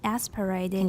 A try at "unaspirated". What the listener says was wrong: you stress un? Make it high.